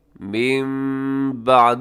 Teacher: والہدى من بعد، یہاں نون ساکن کے بعد با ہے، تو جب بھی نون ساکن کے بعد با ہو تو آپ کو معلوم ہوگا کہ وہاں پہ اقلاب ہوتا ہے، یعنی نون ساکن کو ہم میم کے ساتھ بدل کے پڑھتے ہیں